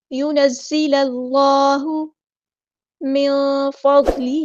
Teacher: یونزل اللہ کو لام کے ساتھ ملا دیں گے، حمزۃ الوصل ہمارا ڈراپ ہو جائے گا